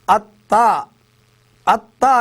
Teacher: అత్త, అత్త అనే పదంలో తా వస్తుంది. ఇది పలికేటప్పుడు మనము అత్ అని ఫస్ట్ పలుకుతున్నాం కాబట్టి ఈ ఒత్తు యొక్క ప్రభావం ముందు అక్షరం మీద ఉంటుంది కాబట్టి ఆ గురువు అవుతుంది.